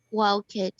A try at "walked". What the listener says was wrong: This verb here, walked, we should pronounce with a final T sound. Yes, you should really use a T sound when you pronounce this verb, okay?